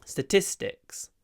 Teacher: statistics but then I do another du at the end so I really only pronounce one aspirated T in this word